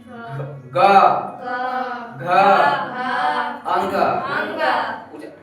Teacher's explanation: सघोष जिसके उच्चारण में कंपन होता है